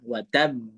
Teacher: Ada yang condongnya bunyinya ke e, ada yang ke a. Tapi ane makai yang ke e ya. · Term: qalqalah